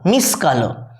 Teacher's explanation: মিশিযুক্ত কালো, মিস কালো, এখানে হস্যইটা বাদ চলে গেছে। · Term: অন্তঃস্বর লোপ